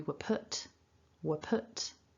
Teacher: the r doesn't come out doesn't need to because p is a consonant sound